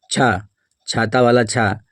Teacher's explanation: छा का उच्चारण स्थान तालु है, इसीलिए ये तालव्य वर्ण है।